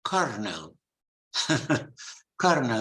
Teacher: it's written with an L but unbelievably you pronounce it with an R